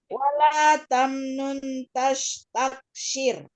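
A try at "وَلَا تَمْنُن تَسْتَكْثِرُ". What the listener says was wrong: Itu tas pakai sin, taksir pakai sa. Sa. Jangan lupa di situ ada ikhfa ya, Ibu. Wala tamnun tastaktir.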